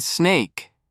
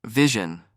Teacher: In snake, it's just a regular S sound. But in words like vision, that S sounds like a Z.